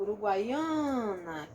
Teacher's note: Eu tenho uma semivogal, uma vogal e outra semivogal, Por isso que eu fiz a representação com o W e com o Y e não com o U e com o I. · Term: tritongo